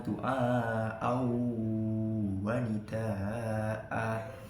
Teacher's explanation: Idgham bi gunnah yakni adalah ketika ada nun mati dan tanwin bertemu dengan salah satu huruf 4 yanmu, ya, nun, mim, waw, wajib dibaca berdengung pada rongga hidung yang terdalam